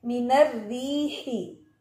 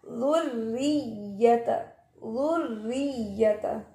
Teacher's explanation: रॉ मुशद्दद के नीचे जेर है तो भी रॉ बारीक है